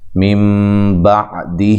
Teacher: یہاں نون ساکن کا اقلاب ہے، اقلاب مع الغنہ، یعنی کہ نون کو میم سے بدل دیں گے، اس نون ساکنہ کو میم سے بدل کر پڑھیں گے۔